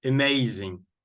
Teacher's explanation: we don't say ah amazing it's a schwa